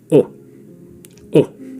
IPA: ʊ